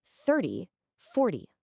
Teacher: Now listen to the tens. The stress jumps to the beginning. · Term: word stress